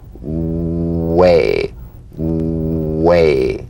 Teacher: ailment and you'll feel better oh the w labial velar consonant the w is a vowel-like sound that begins where the number one vowel ends bring the lips to the smallest opening and pre-seed the following